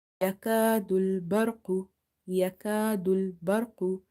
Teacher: Qaf is also heavy. Qaf is from the musta'aliya letters, so you will make it heavy.